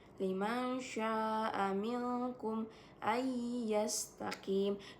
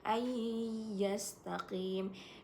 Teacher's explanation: Nun mati bertemu dengan huruf ya itu idgham bigunna, jadi dibacanya dengan dengung.